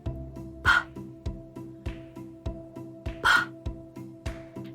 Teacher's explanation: That is the unvoiced version of B